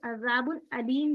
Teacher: حمزہ بن جاتا ہے. اور حمزہ کہاں سے ادا ہوتا ہے؟ حلق سے ادا ہوتا ہے. حروف حلقی کا ہے نا حمزہ.